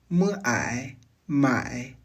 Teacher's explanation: partir d'un A bien ouvert, puis de faire glisser naturellement le son vers le I en revolant légèrement la mâchoire et en étirant les commissures. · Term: finale composée